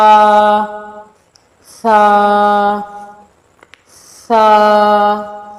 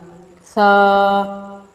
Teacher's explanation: سامنے والے 2 دانت کے کناروں کے ساتھ زبان کا سرا لگے تو سا کی ادائیگی ہوگی۔ اس کی ادائیگی میں آپ نے سیٹی کی آواز بالکل نہیں لانی بلکہ اس کو نرمی سے ادا کرنا ہے۔